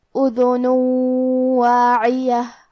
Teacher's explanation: حکم ہے ادغام بغنہ تو ہم یہ حکم کو غنہ اور تشدید کے ساتھ ادا کریں گے